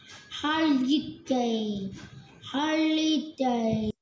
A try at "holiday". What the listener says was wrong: Nào không đọc là holiday, âm ơ, holiday, holiday.